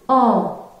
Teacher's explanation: Pour prononcer le son « en », votre langue est en arrière. · pour prononcer le son « en », vos lèvres sont arrondies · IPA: /ɑ̃/